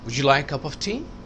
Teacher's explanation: ٹی پر اوپر گیا, اکثر لاسٹ ورڈ پہ اوپر جاتا ہے